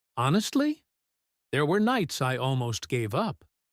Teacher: The word honestly here gets its own little rise